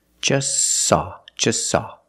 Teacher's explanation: you link the S with the S link them together · We see the T is between consonants, so don't pronounce it. It's silent. Just saw. You link the S with the S.